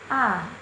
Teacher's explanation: vokal Tengah yakni vokal yang dihasilkan oleh gerakan lidah bagian tengah